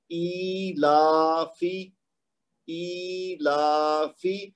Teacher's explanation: تو یہ یوں ہے, ای لا فی, یعنی حمزہ کے نیچے کھڑی زیر ہے اور لام کے اوپر کھڑی زبر ہے اور فا کے نیچے خالی زیر ہے. تو اس کو فا کو تو ہم دیں گے 1 حرکت, لیکن حمزہ اور لام کو 2 حرکت تک کھینچیں گے